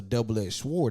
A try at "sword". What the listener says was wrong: But yeah, why are you pronouncing the W like That? It's Sword.